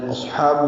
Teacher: حا وسط حلق سے نکالیں گے